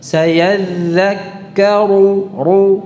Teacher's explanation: Runya tebal. Sayadhakkaru ya. Bukan karu, karu itu tipis. Yang benar tebal.